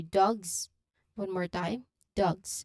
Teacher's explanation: So it's the G sound followed by the voiced Z sound as in dogs. So remember the Z here means your vocal cords are vibrating. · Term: GZ cluster